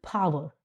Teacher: इन word initial voiceless stop, बोलना है एकदम से, जब आप बोल रहे हो स्टॉप भी होता है और आप उसको प्रोनाउंस भी करते हो. ठीक है, it means strong burst of air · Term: एस्पिरेशन